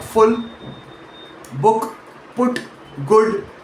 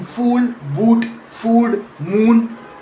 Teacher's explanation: One is shorter and more relaxed, the other is longer and more tense, with the lips pushed further forward and rounder.